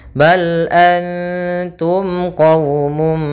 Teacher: Ini harus jelas. Bal antum qawmum, tidak boleh tahan mimnya. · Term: izhar syafawi